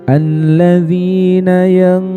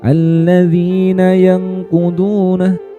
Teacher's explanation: Jadi selain mensamarkan bunyinya didengungkan juga ya dengungannya itu ditahan.